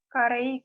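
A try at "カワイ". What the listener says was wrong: Kare. Yang tengah yang salah. Yang tengah salah, ayo. Kawai. Kawai. Kawai.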